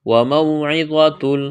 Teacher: واو لین ہے، واو کو موٹا کرنا ہے، تنوین کے بعد لام ہے، ادغام کریں گے بغیر غننے کے۔